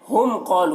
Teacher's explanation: میم ساکن کے بعد قاف ہے تو میم میں اظہار شفوی ہوگا، میم کو ظاہر کر کے جلد پڑھیں گے